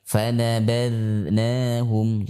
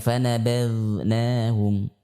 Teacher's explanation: Yang pertama sifat istifal, yaitu tipis. Ya, tidak dibaca tebal.